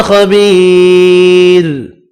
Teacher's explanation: خبیر خا پر پڑھنا ہے، یا مدہ کو ایک الف کی مقدار میں کھینچ کر پڑھیں گے، را ساکن پڑھا جائے گا وقف کی صورت میں، اور را ساکن سے پہلے یا ساکن ہے، را کو باریک پڑھیں گے۔